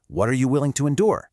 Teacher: Instead of saying what, are, with a hard T, native speakers often link the words together. The T softens to a D sound, so it sounds more like water. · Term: connected speech